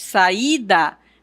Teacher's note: E quando nós estamos pronunciando a sílaba, o I será tônico, ele será mais forte. Saída, percebe que o som mais forte é aqui no I.